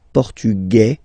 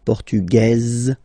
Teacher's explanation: Masculine, portugais, you don't pronounce the S. Feminine form, portugaise, you pronounce this z sound, okay?